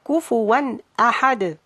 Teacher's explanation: the tanween with the fatha is pronounced as noon, and it's followed by hamza on ahad, So the hamza is one of the letters of the izhar.